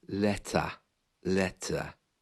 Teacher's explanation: the r is almost gone completely